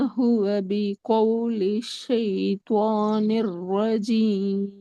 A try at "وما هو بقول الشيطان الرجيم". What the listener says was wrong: ராகம் எடுத்து வருங்க. ராஜீம் கடைசி ராகம் வரல.